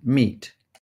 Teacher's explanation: We have high, front, tense, unrounded E, as in meat.